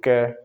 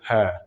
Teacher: कै में देखो जीभ का थोड़ा सा हिस्सा ऊपर टच होता है, लेकिन है में बिल्कुल भी नहीं होता।